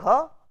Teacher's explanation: If you see the gha, let us I show you the gha, again if it is gha, you see the aspiration will be there. Again VOT occlusion period is voiced, burst is there, and then see the aspiration is voiced. So, this pronunciation is a voiced aspiration.